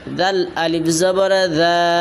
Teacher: এক জবরওয়ালা হরফটাকে এক আলিফ লম্বা করে পড়বেন।